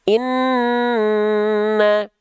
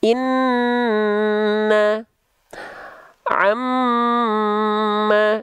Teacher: kalau misalnya kita lafalkan nun bertasydid, dia ditahan 2 harokat